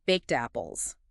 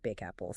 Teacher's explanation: the D at the end of baked it Blends seamlessly with the vowel sound at the beginning of apples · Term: linking